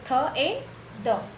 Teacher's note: sound from by द tip of tongue एंड upper teeth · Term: डेंटल